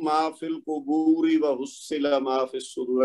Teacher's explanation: را کے نیچے زیر ہے تو ہم اس کو باریک پڑھیں گے